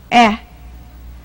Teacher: 它的发音方法是口呈微笑状，唇平齿开，舌尖抵着下齿龈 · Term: 短音